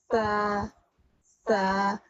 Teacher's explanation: আপনার জিহ্বার আগাটা উপরের দাঁত এবং নিচের দাঁতের মধ্যে একটু ফাঁক থাকে, সে ফাঁকে দিয়ে উচ্চারণ হয়।